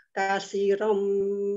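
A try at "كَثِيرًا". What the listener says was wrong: kasirom sinya panjang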